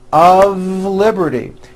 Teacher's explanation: It's not a wood with an unvoiced F. It's all voiced and it's all connected.